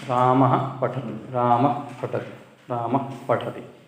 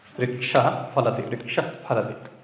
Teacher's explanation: विसर्ग के बाद प और फ हो तो तब उपध्मानीय।